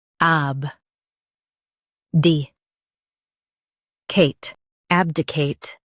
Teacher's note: Emphasize ab and keep di-cate clear.